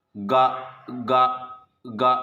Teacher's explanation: देखिए, गा गा गा झंकार उत्पन्न हो रही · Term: घोष व्यंजन